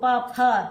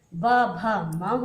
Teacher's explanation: प, फ अघोष हैं और सघोष जो है ब, भ, म हो गए